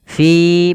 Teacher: Fi panjangkan dia mad thabi'i dua harakat.